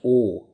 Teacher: ओ का उच्चारण स्थल कंठोष्ठ है, कंठ भी है और ओठ भी है।